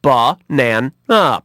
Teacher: The schwa sound is the sound in the word banana, which actually has two schwa sounds in it.